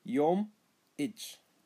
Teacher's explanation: elongate the two M's, the two consonants